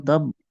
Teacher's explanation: না, পুরোপুরি বা বলা যাবে না, যেহেতু অক্ফু করছি। তো বায়ের মতো হালকা আবাস আসবে, উচ্চারণের আবাস আসবে, কিন্তু বা বলা যাবে না।